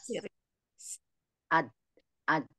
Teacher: Ujung lidah ketemu dengan pangkal apa gigi seri atas. Tempat tumbuh gigi seri atas. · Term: dal